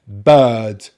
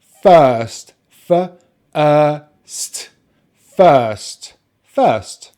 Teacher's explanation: your tongue is just in the center of the mouth. The lips are relaxed and the jaw is open just a little bit. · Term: long vowel sound